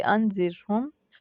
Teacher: रॉ को हमने बारीक पढ़ के पढ़ना है